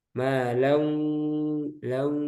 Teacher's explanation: Jadi idghamnya yang nakis masih menyisakan sifat huruf yang pertama guna. Jadi lau masuk hidung. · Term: idgham diguna